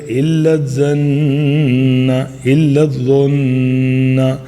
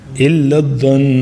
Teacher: اور آگے جو ہے ان تتبعوا، تو دیکھو یہاں پہ اخفا کیا، آگے پھر الا الظن، الا الظن، تو نون کے اوپر تشدید آ گئی تو اس لیے ہم یہاں پہ جو ہے نون غنہ کہ اپنی ساؤنڈ کو ناک میں لے آئیں گے اور ایک الف تک ہولڈ کریں گے